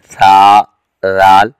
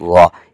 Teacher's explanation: ثا اور رال کی آوازیں باریک ہیں اور وا کی آواز قدرے موٹی ہے